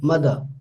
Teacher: as you can see that i am not pronouncing the final this final ra is often dropped in english language